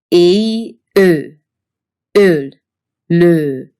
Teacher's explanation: this vow is based on the tongue position of hungarians e your tongue should be in the front fairly high up